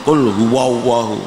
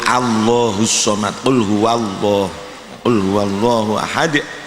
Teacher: Jadi untuk Allahu, jangan dibaca dengan huruf o.